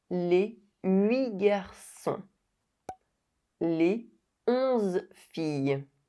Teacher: The liaison is forbidden before the numbers 8 and 11.